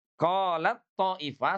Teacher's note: seakan-akan huruf t-nya dirubah menjadi huruf th ya. Jadi lebur sepenuhnya.